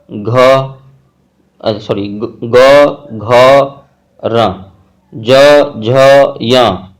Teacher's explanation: इस तरह का वर्ण को बोलने में एक गुंज होता है, नाद जैसा होता है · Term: घोष वर्ण